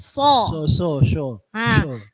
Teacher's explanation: Jadi tidak ada hembusan dari dalam